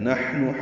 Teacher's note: نحن حا ساکن پہ ہمس ہے